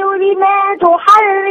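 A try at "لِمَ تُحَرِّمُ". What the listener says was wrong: لا مش ألف. بصي يا اسمعيني، لما تحرم على طول، مش لما، مفيش ألف.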